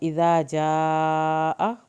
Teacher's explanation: इज़ा जाअ मद वाजिब पढ़ी हमने, हमज़ा की ज़बर को लंबा नहीं करना